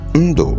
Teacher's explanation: Ndo, which is a mid tone, low tone